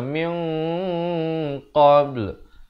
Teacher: Min di sini ikhfa hakiki. Dibacakan dengan samar panjang dua harakat dan dibacakan dengan tebal ikhfa tersebut kerana qaf merupakan isti'ala.